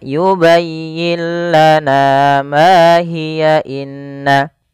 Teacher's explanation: Tapi kalau kita lanjut pada lafal hiya, ini dia tidak jadi mad tabi'i lagi, tapi menjadi 1 harakat saja.